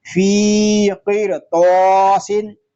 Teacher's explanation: قاف اور طا یہ دونوں اس لیے پر ہیں کہ یہ دونوں حروف مستعلیہ میں سے ہے۔ الف مدہ اس لیے ہو رہا ہے کہ الف سے پہلے زبر آ گیا ہے۔